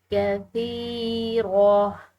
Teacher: کثیرہ، یہاں پر جو ہے یہ گول تا ہے لیکن آگے وقف مطلق کی علامت ہے جس کی وجہ سے گول تا جو ہے یہ ہا سے بدل جاتی ہے، تو اس کو ہم ہا پڑھیں گے، ٹھیک ہے.